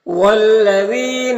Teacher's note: لام مشدد حرف ہے تو پیچھے والے متحرک حرف واو سے مل کر پڑھا جائے گا